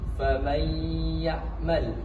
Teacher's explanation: Fam y'mal fam ini masuk ke idgham biguna atau idgham alguna karena nun sukun bertemu dengan huruf ya. Langsung memasukkan suara ya itu dileburkan